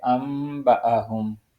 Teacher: اس کے بعد ہے با سے پہلے نون ساکن آ رہا ہے، اور ظاہر ہے جب جہاں نون ساکن آئے گا تو وہاں میم سے تبدیل کر دیا جائے گا، کیونکہ اقلاب کا قانون یہی ہے۔